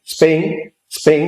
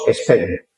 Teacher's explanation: como en castellano no existe, tenemos que regularizarlo a la estructura silábica del castellano. Entonces le metemos una E.